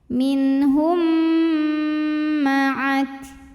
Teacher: Maka mim pertama masuk ke mim kedua disertai bunyi dengung. Jadi di sini bunyi M-nya tahan. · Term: idgham mimi